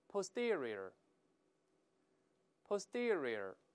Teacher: 注意这个字母▁t▁本来发▁t，▁在▁s▁后面作怪，也要浊化成▁d▁的声音